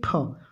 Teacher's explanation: क्योंकि इसमें ठ में ह की अनुभूति हो रही है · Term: महाप्राण